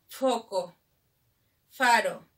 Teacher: Labio dental, el labio inferior choca con los dientes.